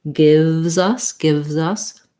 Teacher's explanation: So that basically sounds like it has the I vowel, a V, and then it's easier to do this if you put your Z kind of on the us, because we link these two.